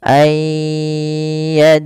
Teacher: bunyi nunnya hilang, kemudian terdengar hanya bunyi iya-nya saja dan ditahan sepanjang 2 harakat.